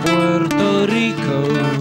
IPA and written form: ˈpweɾto ˈriko (PUERTO RICO)